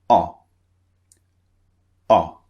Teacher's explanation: the shape of the mouth is slightly rounded not very rounded but slightly rounded · One of them, the first one, is two vowels pushed together, as we've seen before. The second sound is very, very short and very brief. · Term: the short one